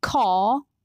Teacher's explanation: in american english r is pronounced in all positions and it changes the quality of the vowel that comes before it